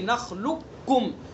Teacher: اور رہا مسئلہ کہ ادغام تام کریں گے یا ناقص کریں گے، تو یہاں اس میں ادغام تام ہوگا، یعنی قاف کی آواز ختم ہو جائے گی، کاف کی نکلے گی